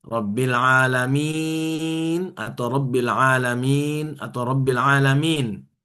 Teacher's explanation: Mad far'i ini ada dua, karena sukun dan karena hamzah. Karena sukun rabbil alamin ini bisa dibaca 2 4 6 harakat ya